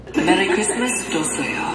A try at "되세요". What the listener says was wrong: 되세요, like a half. They said a 도세요.